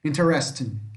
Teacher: A sílaba mais forte é aqui, ó, rest.